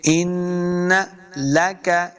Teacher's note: نون مشدد ہے، تو ہم نے حمزہ کو نون کے ساتھ ملانا ہے اور غنہ بھی کریں گے